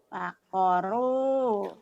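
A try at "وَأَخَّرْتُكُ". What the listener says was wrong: Wakhoroku. Wakhoroku. Bukan wakhoru. Ini kan ada roknya. Wakhoroku. Wakhoroku. Wakhoru wae. Wakhoroku ini ada kunya. Tadi rohnya ketinggalan. Sekarang ku. Wakhoroku. Khoroku.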